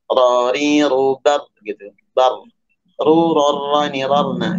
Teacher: Ro ada bergetar, tapi getarannya jangan terlalu banyak, cukup 2 getaran ya. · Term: takrir